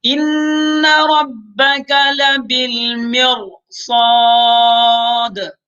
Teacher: صاد چونکہ موٹا حرف ہے تو اس کی وجہ سے ہم را کو بھی کیا کر لیں گے، موٹا پڑھ لیں گے